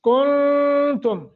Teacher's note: کنتم یہاں اخفا کریں گے، نون ساکن ہے، آگے تا حروف اخفا میں سے ہے